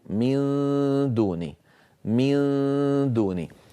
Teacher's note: لما انطق النون الساكنه عند الدال لا اقرع بطرف اللسان مخرج الدال وانما اجعله قريبا منها جدا وانطق الغنه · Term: اخفاء النون, إخفاء النون